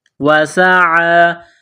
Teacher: کی آواز پیدا کرنی ہے، سین کو باریک کرنا ہے، وسعی، عین کڑا زبر ع، ایک الف کے لمٹ میں کھینچنا ہے